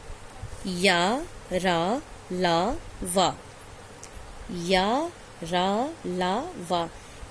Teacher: 4 व्यंजनों का उच्चारण स्वरों तथा व्यंजनों के मध्य का होता है, बीच का होता है, इस कारण इन्हें अंतस्थ व्यंजन कहते हैं।